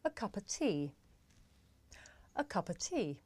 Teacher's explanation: the words a and of become schwa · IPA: /ə 'kʌpə tiː/